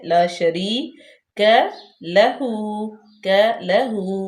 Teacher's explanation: یا مدہ ہے، یا ساکن ما قبل مکسور یعنی کہ زیر ہے، لا شریک لہو، لہو، کاف باریک، لام بھی باریک، ہا پہ الٹے پیش لمبا کریں گے